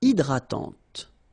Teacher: don't insist on the final E, and this is nasal.